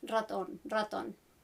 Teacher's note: the R that is a little bit harder, which is a bit of something in between the single R and the rolled R. So you would find this written as a single R at the beginning of words like raton, raton.